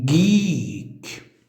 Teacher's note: consonant produced by raising the back of the tongue to velum, the first and the last sound of geek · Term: Velar